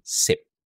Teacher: Instead of saying ship, pinapalitan natin siya ng letter S. So nagiging sip.